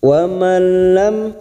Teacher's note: nun sukun bertemu lam namanya idgham bila guna hanya masuk tanpa mendengung masuk ke huruf lam.